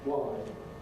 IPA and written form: wɑɪd (wide)